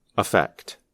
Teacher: The confusion happens because we often pronounce the two words the same way. When we are speaking quickly, the first vowel of the noun, effect, is reduced to the quick sound, affect, which is the same sound as the verb. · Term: the schwa